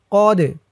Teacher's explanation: দালটা কলকলার হরফ, ধাক্কা দিয়ে পড়তে হবে